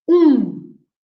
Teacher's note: the m is there not to be pronounced we don't pronounce the m it's just there to make a nasal sound of the u